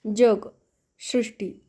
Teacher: आता जग सृष्टी म्हणताना ज च्या जागी य चा उच्चार होत असतो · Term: य युक्त उच्चार, ययुक्त उच्चार